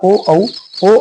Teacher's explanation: आवाज सीधी आ रही है और हमारे होट गोल हो रहे हैं ठीक है तो होट का भी यूज हो रहा है तो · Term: कंट ओष